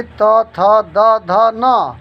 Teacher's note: दंत से उच्चरित वर्ण हैं ल, री, तवर्ग यानी त, थ, द, ध, न और दंत स।